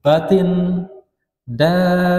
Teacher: Ba-nya ditasydid, ditahan sedikit